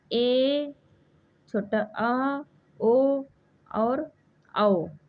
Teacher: अर्ध विवृत में मुख द्वार लगभग आधा खुलता है।